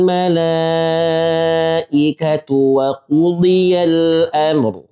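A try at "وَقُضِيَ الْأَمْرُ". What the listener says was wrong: Di sini kita tak boleh mantulkan mim. Bukan amr. Kita cuba ya mim sendiri ada tawassut bainiyah. Ya ini cukup waktunya. Barusan ra. Wa qudiyal amr. Ya, jangan sampai pakai jiddah ya. Amr ada amr.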